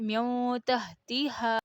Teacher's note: اقفا میں نون کی جو آواز ہے نا وہ ناک میں تقریباً آدھی نکلتی ہے اور زبان کا کنارہ گلے کی طرف ہلکا سا تھوڑا جھک جاتا ہے۔ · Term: اخفا